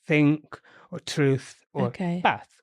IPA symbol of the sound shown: θ